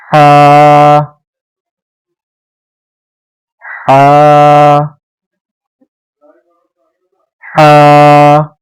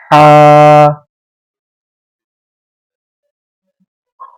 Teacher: ہا کی آواز حلق سے نکالنی ہے. اپنے حلق کو مکمل کھولنا ہے اپنے گلے کو اور اس کے اندر سے آواز نکلنی چاہیے